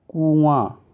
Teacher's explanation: कुआं बोल रहे हो तो नाक मुंह दोनों आ रहा है, नाक दबा दोगे तो कु आ हो जाएगा, और नाक दबा के बोल रहा हूँ मैं, कु आ, कुआ, देखो नाक नहीं यूज हो रहा है, ठीक, कुआ हो जाएगा तो कुआं नहीं हो पाएगा, ठीक। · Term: अनुनासिक